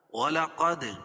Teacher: دال پر قلقلہ، قاف کو پر پڑھیں گے